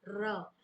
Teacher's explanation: जिस व्यंजन के उच्चारण में जिह्वा की नोक वायु के कारण कांपती और लुढ़कती है, उसे लुंठित या कंपित व्यंजन कहते हैं।